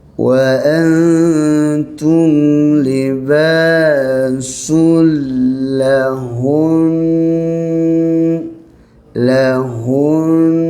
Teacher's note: Ingat kita matikan nun dulu, baru kita keluarkan dengung. Panjangkan dengung tu.